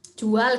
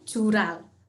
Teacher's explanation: ada juga penambahan bunyi getar